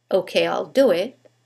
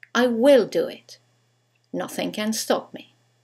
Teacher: When we use the contraction, there is no stress.